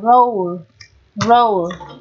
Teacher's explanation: Là nguyên âm đôi các bạn nhé. Nguyên âm đôi này, đây là âm là bao gồm âm Ơ và âm U. Kết hợp với nhau tạo thành một nguyên âm đôi đọc là O.